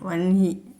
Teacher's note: വഹ്നി എന്നാണ് അവിടെ എഴുതിയിരിക്കുന്നതെങ്കിലും നമ്മൾ ഉച്ചാരണത്തിൽ വന്ഹി എന്നാണ് പറയുക